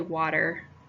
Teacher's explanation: the T though it's written with a t when I say water it sounds a lot more like a d